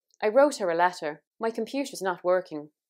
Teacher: basically you're adding in all your R's, not like standard Southern British, where if we get them near a vowel sound, they're very often not pronounced.